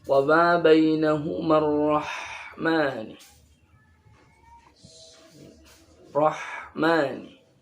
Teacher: Ha ini tempat keluarnya di tenggorokan tengah. Dan ini ha ini ketika diucapkan jalan, karena termasuk huruf ikhwah atau rokhawah.